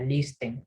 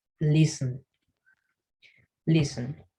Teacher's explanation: Esta palabra en inglés, la T es muda